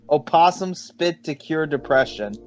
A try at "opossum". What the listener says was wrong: The O is silent.